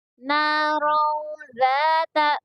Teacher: را کے اوپر زبر ہے اس لیے را کو پور پڑھا جائے گا، اور دیکھیے یہاں پر تنوین ہے، تنوین کے بعد میں ذال ہے، ٹھیک ہے، اخفا کے حرفوں میں سے ہے نا یہ ذال، اس لیے یہاں پر اخفا ہوگا